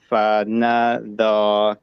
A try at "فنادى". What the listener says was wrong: Yeah, good job.